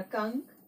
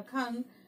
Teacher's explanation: अनुस्वार क्यों अनुस्वार बोलते हैं, क्योंकि जब भी अंग का उच्चारण किया जाता है तो इसकी ध्वनि मुंह और नाक के द्वारा निकलती है, ठीक है। इसलिए इसे हम अनुस्वार कहते हैं।